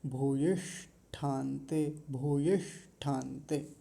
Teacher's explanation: यहाँ मूर्धन्य शकार हलंत है, आधा है, तो मूर्धन्य शकार को थोड़ा ध्यान से बोलेंगे